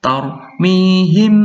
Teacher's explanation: mim bertemu ba, harus dibaca dengung